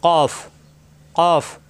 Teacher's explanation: কফ, জিহ্বার গোড়া থেকে উচ্চারণ হবে,